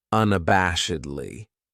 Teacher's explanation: That second syllable has that schwa, that sound